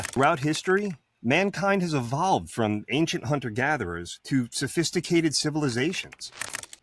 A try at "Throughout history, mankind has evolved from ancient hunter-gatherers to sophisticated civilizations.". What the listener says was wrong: You put a little bit too much flavor on evolve. You announced the shit